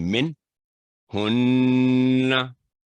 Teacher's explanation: आगे मिन, क्योंकि नून साकिन के बाद हा है, अभी बताया गया इजहार का रूल, तो यहाँ मिन की आवाज लंबी नहीं करेंगे, गुन्ना नहीं करेंगे